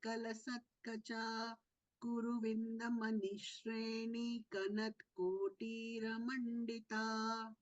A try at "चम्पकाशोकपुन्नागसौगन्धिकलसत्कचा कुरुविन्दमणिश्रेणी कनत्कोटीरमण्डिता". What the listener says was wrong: In the first line, Saugandhikala Satkacha, don't prolong the dhi. In the second line, Kuru Vindamanishrini Kanat Kotira Mandita. Ni has to be prolonged.